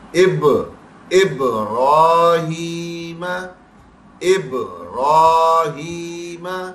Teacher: قطب جد میں با آتا ہے، با کا ساکن حالت میں آ جانا قلقلہ کرے گا، ایکو ساؤنڈ پروڈیوس کرے گا